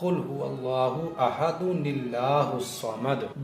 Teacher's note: جہاں بھی نون قطنی کا قاعدہ بنے گا تو دو پیش میں سے اس طرح سے ایک پیش یہاں رہ جائے گا اور دوسرے پیش کا نون زیر نی بنا کر لام کے ساتھ ملا کر پڑھیں گے